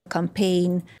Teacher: she's just not pronouncing the vowel at all in the first syllable